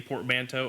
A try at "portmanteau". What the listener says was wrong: I don't think that's how you say that word. I think it's just portmanteau. I don't think you're supposed to hit the T that hard.